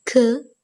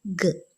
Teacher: The active articulator is the back of the tongue. So, k as in voiceless, velar, plosive or stop, and g as in velar, voiced, plosive or stop. And both k and g occur in all positions. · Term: velar plosives